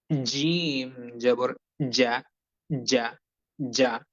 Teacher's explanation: বরাবর জিহ্বার মধ্যখান উপরের তালুর সঙ্গে লাগিয়ে জিম অক্ষরটি শক্তভাবে উচ্চারণ করতে হবে। বরাবর জিহ্বার মধ্যখান উপরের তালুর সঙ্গে লাগিয়ে জিম অক্ষরটি, জি, জি, জি, জিম জিম অক্ষরটি উচ্চারণ করতে হবে।